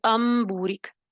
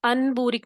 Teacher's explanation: نون کی آواز کو میم سے بدل دیا، یہ بالکل یہ والا طریقہ ہے اقلاب کرنے کا۔